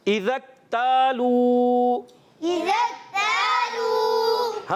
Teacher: زال کو ہم نے زا سے نہیں بدلنا، زال کی ادائیگی کلیئر رکھنی ہے۔ اور یہاں پر اذا اکتالوا، إذا اكتالوا حمزہ کو کلیئر رکھیں گے, واضح کر کے ادا کریں گے, اور ذال کو پھر اچھے طریقے سے ادا کریں گے.